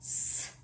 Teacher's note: А звук, который обозначает эта буква, С. Этот звук согласный. Глухой. У него есть пара, значит, он парный.